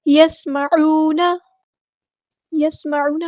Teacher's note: یسمعون میں سین کی سیٹی کو ہم واضح کریں گے